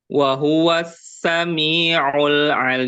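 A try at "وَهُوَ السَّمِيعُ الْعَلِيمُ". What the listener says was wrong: Eh, mimnya jangan terlalu panjang. Wa huwas sami'ul alim. Gitu.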